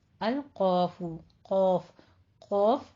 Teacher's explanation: زبان کی جڑ اور اوپر سے جو وہ کوا سا لٹک رہا ہوتا ہے، ان دونوں کے ملنے سے ادا ہوتا ہے